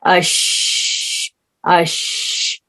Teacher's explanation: تو جب شین ہم ادا کرتے ہیں تو جو ہے ہوا جو ہے پورے منہ میں پھیل جاتی ہے اس کو ادا کرتے وقت۔ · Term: تفشی